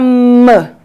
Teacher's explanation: Nós temos aqui o lábio inferior tocando o lábio superior. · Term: som M